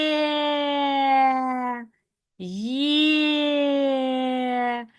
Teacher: ці два звуки зливаються до купи і вони співаються, тому ми позначаємо його як голосний. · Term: звукосполучення